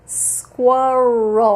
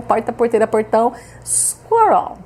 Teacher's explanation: Aí você puxa o R como um belo caipira